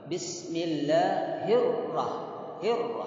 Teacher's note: Ra itu takrirur ra'at, jangan lebih dari 1 harokat. Tidak boleh berpanjang-panjang.